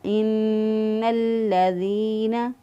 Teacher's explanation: لام کا لام میں ادغام کر دیا، تو اس کو مضبوط اور قوت سے پڑھیں گے · یا مدہ ہے، یا ساکن سے پہلے والے حرف کے نیچے زیر، اس لیے اس کو ایک الف کے برابر لمبا کریں گے